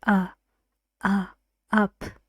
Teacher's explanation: it's not the back it's not the front it's the middle of your tongue so you need to pull your tongue back and then the middle of your tongue goes up